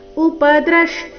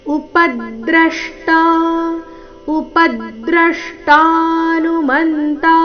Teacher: ಇಲ್ಲಿ ಪ ಮತ್ತೆ ದ್ರ ಎರಡು ಅಕ್ಷರಗಳ ಮೇಲೆ ಆಘಾತ ಬರಬೇಕು ಉಪದೃಷ್ಟ ಅಂದ್ರೆ ಉಚ್ಚಾರಣೆ ಸರಿಯಾಗಿದೆ ಆದರೆ ಪ ಮೇಲಿನ ಆಘಾತ ಬರಲಿಲ್ಲ ಸೋ ಪ